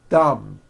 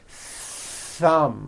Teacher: My tongue came out, but there was never any air friction. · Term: TH sound